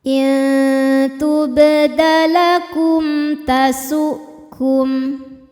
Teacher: Intubdalakum. Ada hukum idhar syafawi, sebab mim sukun menghadapi huruf selain mim dan ba yaitu huruf ta, maka mim sukun dibaca dengan jelas.